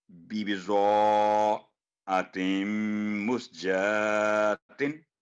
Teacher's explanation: بی بی رو کو پر کر کے پڑھیں گے